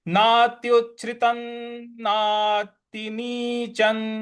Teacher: जो त पे अनुस्वार है उसका न में उच्चारण ले आएंगे। नात्युच्छ्रितं नातिनीचं।